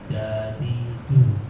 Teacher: Bukan dadidu, tapi dadidu tanpa angin, tanpa desis.